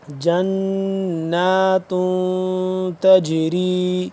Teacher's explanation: جنات نون یہاں پہ مشدد، اس پہ ہم غنہ کریں گے.